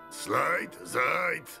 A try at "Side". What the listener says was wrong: Nazywam się Side. Jak slide, ale bez L.